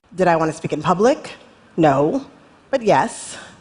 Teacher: She has to start low so she has where to go right later on.